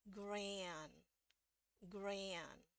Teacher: untuk yang Amerika dulu ya kalau a ketemu n itu pasti dibaca jadi ey ya e dengan e terus kita masukin huruf y kecil aja